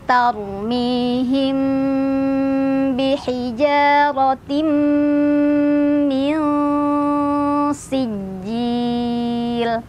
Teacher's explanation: Jadi mimnya masih samar-samar ya, di antara samar tuh artinya antara izhar dan idgham. Jadi enggak terlalu jelas ya.